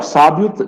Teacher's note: O I é mais fraco, é semivogal, o O é mais forte, é vogal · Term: ditongo é crescente